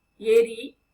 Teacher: ஏரி நாக்கு அப்படியே முன்னாடிதான் இருக்கு. அதுவே ஏரி அழுத்தி உச்சரிக்கிறோம் இல்லைங்களா.